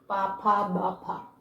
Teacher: ഓഷ്ടം എന്ന് പറഞ്ഞാൽ എന്താണ്? ചുണ്ട്. ചുണ്ടിൻ്റെ സഹായത്തോടുകൂടി ഉച്ചരിക്കുന്നതാണ്. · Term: ഓഷ്ട്യാഹ